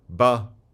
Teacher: perhaps a voiced labial stop